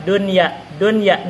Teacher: Nun bertemu dengan huruf idgham tapi di dalam satu kalimat maka tidak boleh diidgham dia harus dibaca Idhar